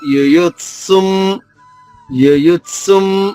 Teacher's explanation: రెండవ యు పైన ఆఘాతం ఉంది, దాని తర్వాత సంయుక్తాక్షరం ఉంది కాబట్టి సులోని అంటే తా సు 2 అక్షరాలు కలిసినాయి కదా ఇక్కడ, దానిలోని తా ద్విత్వం చేసుకుంటూ యుయుత్సుం యుయుత్సుం అని స్వరోచ్చారణ బ్రాకెట్ లో ఉన్న అక్షరమే మా పుల్లుగా.